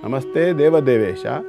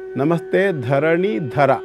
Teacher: ಅಲ್ಲಿ ದೇವದೇವೇಶ 2 ಅಲ್ಪ ಪ್ರಾಣ, ಇಲ್ಲಿ ಧರಣೀಧರ 2 ಮಹಾಪ್ರಾಣ